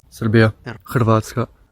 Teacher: Serbo-Croatian has syllabic r, like in Serbia, Hrvatska